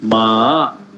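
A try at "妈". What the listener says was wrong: Very good.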